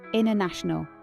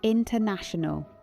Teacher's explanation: the American culture of clarity, the T often disappears entirely because speed is the priority.